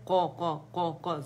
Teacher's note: قاف کا قلقلہ موٹا ہے, قا قا قا قا زق زو زو زق زق زق زق نہیں کریں گے.